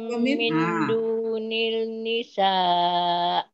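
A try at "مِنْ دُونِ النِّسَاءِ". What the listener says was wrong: Min dunin nisa. Tarik nun jumpa nun kan? Mana datang lam? Kenapa tak dibaca lam? Syamsiah. Syamsiah tu tak ada tanda mati.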